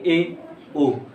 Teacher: जिनके उच्चारण में मुख का आधे से अधिक भाग बंद रहता है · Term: अर्ध समृद्ध स्वर